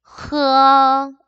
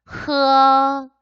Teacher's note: 그래서 얘는 기역, 키역, 히읗 발음을 하게 되면은 끄어, 크어, 흐어 이렇게 발음을 하는데 이 H는 약간 뭔가 가래 끓는 소리가 나듯이 목구멍과 가까운 곳에서 소리가 나도록 발음을 해주시면 되겠습니다